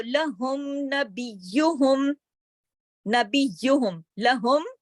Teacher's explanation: میم ساکن کے بعد نون ہے، یعنی کہ با اور میم کے علاوہ ہے نا نون، اس وجہ سے میم کو پوری طرح ذاتی صفت کے ساتھ، غنے کے ساتھ اور اظہار کے ساتھ پوری طرح ادا کیا جائے گا۔ تو یہ اظہار شفوی کہلاتا ہے۔